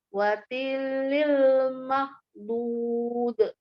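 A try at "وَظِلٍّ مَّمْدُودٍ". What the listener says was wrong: Wadhillim. Ada wadhillim. Wadhillim. Wadhillim ya. Lam tasdid, mim tasdid. Jadi bukan wadhilil. Wadhillim. Nah, tasdidnya ke mim. Lim. Ya, kemudian ditahan, dia gunakan wadhillim mamdud. Belum jelas gunnahnya ya, masih terbaca lil. Wadhillim, langsung ditutup mulutnya, lim. Wadhillim mamdud. Nah, jadi diperhatikan ya, idgham dia gunnahnya ya.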